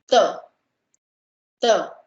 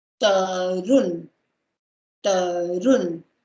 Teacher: you touch your tongue behind your teeth, upper teeth. So it's like ta, ta. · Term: dental